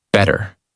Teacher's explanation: In these words, the mouth does not stop strongly on the T. The tongue touches quickly and moves on. That is why it sounds softer.